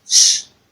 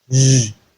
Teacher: The difference between the voiceless palato-alveolar fricative sh and the voiced palato-alveolar fricative z is the application of voice. So this one is voiced, whereas this other one is voiceless.